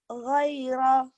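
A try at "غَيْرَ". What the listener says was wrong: Tadi kedengarannya kayak jiro ya. Ini Giro, goiro.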